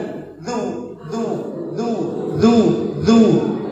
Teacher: lidah bertemu dengan gigi seri atas